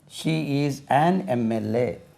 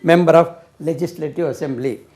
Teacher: ஷார்ட்டாக MLA சொல்லும்போது நீங்கள் எம்னு உச்சரிக்கிறீங்க. மெம்பர் சொல்லும்போது மே ஆகிடுது, மெம்பர்.